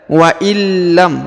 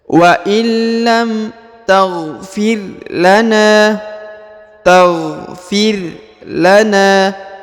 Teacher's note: apabila nun bertemu dengan huruf lam, maka huruf nunnya atau nun sukun menjadi hilang ya.